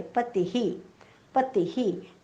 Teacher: दोन्ही अक्षरं ऱ्हस्व आहेत, त्यामुळे विसर्गाचा उच्चार सुद्धा ऱ्हस्व हीच होणार आहे.